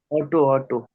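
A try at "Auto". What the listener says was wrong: ऑटो नहीं होती, आउटो होती है, आउटो, दास आउटो, ऑटो नहीं है बेटा, आउटो है।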